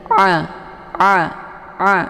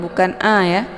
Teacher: Ini a ya, bukan ha. Nah, untuk makharijul huruf a ini yaitu di tenggorokan bagian tengah. A, bukan lewat hidung, bukan a ya.